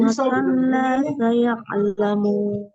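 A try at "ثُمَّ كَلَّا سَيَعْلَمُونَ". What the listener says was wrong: Lagi sayanya kurang, saya alamu. Ya-nya lagi ya'lamun. Kala ya-nya lagi summa.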